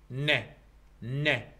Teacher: طبعا انت من تريد تنطق صوت الن، اللسان راح يلامس هاي المنطقة، يسمونها الالفيولار ريدج